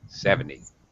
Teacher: you don't even hear the T at the end